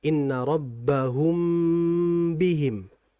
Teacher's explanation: Mim mati ketemu ba. Ikhfa syafawi ini masuk kategori ghunah yang sempurna sehingga harus ditahan terlebih dahulu tidak dilepas dengan cepat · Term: ikhfa syafawiyah